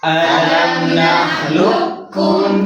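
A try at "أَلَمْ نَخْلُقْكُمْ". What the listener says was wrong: Nah, bukan gini lukum nanti gini ko ku. Nah, balik luk. Makhraj kembalikan ke makhrajnya kaf. Alam, kalau tadi kan makhrajnya dhamma yang kami masukkan ke kaf. Luk tegang akram. Alam nakhluqukum.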